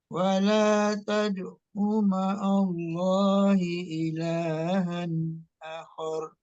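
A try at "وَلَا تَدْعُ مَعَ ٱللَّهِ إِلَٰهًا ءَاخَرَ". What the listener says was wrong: Akhornya kecepatan A-nya. Kecepatan. Akhor, bukan akhor. Akhor.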